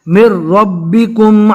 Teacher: میم کو ڈائریکٹ رو سے ملانا ہے،